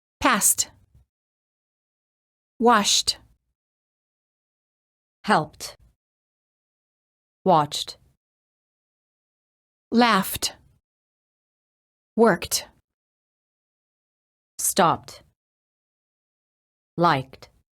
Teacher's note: If the last letter of the word ends in a voiceless consonant, the E is silent and the D is pronounced as T.